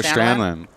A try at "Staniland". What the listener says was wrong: No D. S-T-A-N-A and then land.